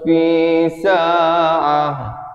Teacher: ta itu ditukarkan kepada bunyi ha. Sebab ini ta marbutah, ta simpul.